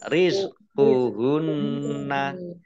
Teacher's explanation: Tidak rizqunna ya tidak, tapi rizquhunna nun tasdid dibaca hunnah atau mendengung ditahan 2 harokat